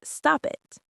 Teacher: We don't say stop it, we link the P and the I. It sounds like one word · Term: consonant linking